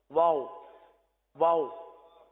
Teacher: واو میں ہونٹ گول ہوتے ہیں